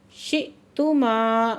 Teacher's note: यहाँ पे हमज़ा पे झटका दे के पढ़ रहे हैं। शिअ्तुमा, माँ पे फिर अली मद्दा है, 2 हरकत खींच के पढ़ रहे हैं।